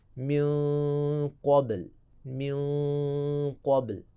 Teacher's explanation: مثلاً اسی من کو لے لیں، من کے بعد اگر ہم قبل کو لگائیں، قبل، قوف موٹے حروف میں سے ہے تو پھر من کا جو غنّہ موٹا ہوگا